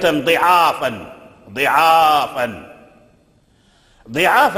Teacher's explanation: العين مفتوحة، وتولد من هذه الفتح ألف، ألف العين ضعافا، لكن قبل العين الضاد مكسورة، وهي من أسباب الإمالة، من أسباب الإمالة.